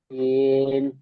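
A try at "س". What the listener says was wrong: সিন হরফটি 3 আলিফ পরিমাণ টান হরফ, টান দিতে হবে তো। সিন,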